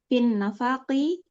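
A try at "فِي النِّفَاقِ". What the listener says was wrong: Fin nifaki. Itu keliru dia. Fin nifaki ya. Yang benar nifak ya, diganti harokatnya Fin nifak dalam kemunafikan. Itu harokatnya mungkin keliru. Harokatnya diganti ya.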